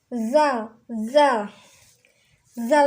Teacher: Zal di sini adanya di gusi nih. Bunyinya keluar dari ujung lidah serta menempati dengan ujung dua gigi seri yang atas.